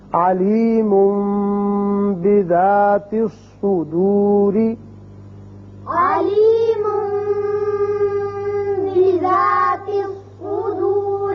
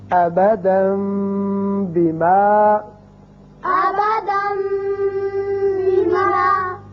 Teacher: كافر عزیز بچوں، یہاں آپ نے اقراب کا قاعدہ سمجھ لیا کہ جب بھی نون ساکن یا تنوین کے بعد حرف با آ جائے تو وہاں اقلاب کی وجہ سے ایک الف کے برابر آواز ناک کے بانسے میں ٹھہرتی ہے